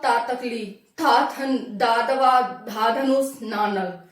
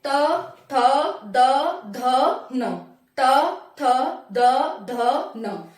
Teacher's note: फिर आता है तवर्ण, तवर्ण मतलब दांत, ये दांत का उपयोग होता है इसमें, जैसे तातकली, तातकली, हमारी जीभ और दांत दोनों का मिक्सर हो रहा है इसमें, हमारी जीभ दांतों से टच हो रही है, ठीक है, मूर्धा पे नहीं जाएगी, ऊपर नहीं जा रही, सिर्फ दांतों से टच हो रही है हमारी जीभ, तो इसी को हम दांत वर्ण कहते हैं।